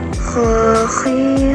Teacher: Dikeluarkan dari tenggorokan yang terdekat dari rongga mulut, dan ketika huruf Kh mati tidak boleh memantul.